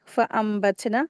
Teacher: नून साकिन के बाद बा आया है, तो नून की आवाज़ को मीम में बदलेंगे, यहाँ पर इक़लाब हो रहा है।